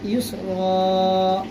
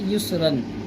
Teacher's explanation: اگر دو زبر پر وقف کرنا ہو تو اس کو ہم رن نہیں پڑھیں گے، بلکہ ایک زبر ہٹا کر ایک زبر کو ہم پڑھیں گے